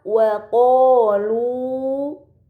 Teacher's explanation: Maka harus dibaca panjang selama 2 harokat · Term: mad tabi'i